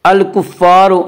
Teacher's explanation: الف مدہ کو 1 الف کے برابر کھینچ کر پڑھیں گے۔ حل ثوب الکفار، الکفار کی را کو پر پڑھا جائے گا، اس کا قاعدہ کہ را کے اوپر زبر پیش آئے تو را کو پر پڑھا جائے گا، را کے نیچے زیر آئے تو را کو باریک پڑھا جائے گا، یا را کے اوپر پیش اس لیے را کو پر پڑھیں گے۔